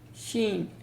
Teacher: So and how we do it we when we say the sheen our tongue touches the upper pallet exactly the roof of the hard part of the mouth and the sound is sheen it's light and it is buzzing or kind of whistling sound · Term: light letter